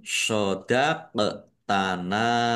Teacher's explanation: dal sukun bacaan qalqalah dibaca memantul qof sukun juga bacaan qalqalah dibaca memantul